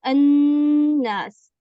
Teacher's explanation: یہ لام پورا کا پورا اس نون کے اندر مدغم ہو چکا، اب لام موجود ہی نہیں رہا، اب وہ غائب ہو چکا ہے، نون میں شفٹ ہو گیا سمجھ لیں. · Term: لام شمسیہ کا نون میں مدغم